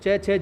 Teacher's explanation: जिन व्यंजनों के उच्चारण में स्पर्श का समय अपेक्षाकृत अधिक होता है और उच्चारण के बाद वाला जो भाग है वो संघर्षी हो जाता है, उसको स्पर्श संघर्षी कहते हैं। यानी तालु और जो जिह्वा है उसके मध्य हवा का संघर्ष होता है, इसीलिए हम इनको च, छ, ज को स्पर्श संघर्षी व्यंजन कहते हैं।